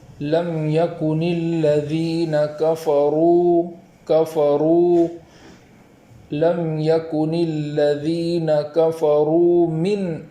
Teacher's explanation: الذین کفروا میں را کو پور پڑھیں گے، موٹی آواز کے ساتھ پڑھیں گے، اور اس بات کا خیال رکھیں گے کہ وہاں اس کے بعد جو واو مدہ ہے وہاں ایک الف کے برابر تاخیر بھی کریں گے۔